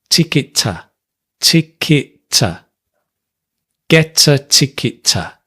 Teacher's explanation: Ticket to, ticket, we also link, but because the T and the T are the same, we just have one